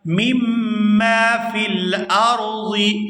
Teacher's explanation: میم کو جب دوسری دفعہ الف مدہ کے ساتھ ادا کریں گے تو اس کو کھینچ کر ادا کیا جائے گا